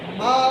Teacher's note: چھوٹی مد ہے 3 الف کے برابر لمبا کریں گے